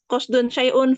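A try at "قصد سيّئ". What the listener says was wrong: Sa ya itu pakai sa bukan sya ya, pakai sa biasa 4 titik ya, bukan sya. Sa biasa ya. Sayyi'un. Ya, sayyi'un.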